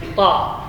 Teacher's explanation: di ujung lidah di usul tanaya, pangkal gigi seri atas